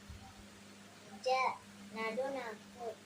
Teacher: நடுநாக்கு அதற்கு நேர்மேலே உள்ள நடுமுரிசை தொடும்போது வெளியாகும்